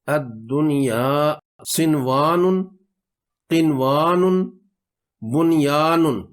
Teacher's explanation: اگر نون ساکن اور حرف یرملون ایک ہی کلمے میں آئیں تو نون کو ظاہر کر کے پڑھیں گے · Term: اظہار مطلق